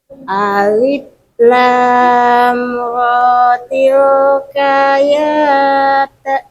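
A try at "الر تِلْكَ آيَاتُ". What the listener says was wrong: Lamnya kurang panjang. Lamnya kurang panjang. Kurang lama lam.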